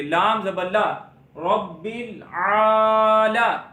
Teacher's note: لام کے اوپر زبر ہے، منہ اور آواز کھول کے پڑھیں گے، اور اس کو لمبا کر کے نہیں پڑھیں گے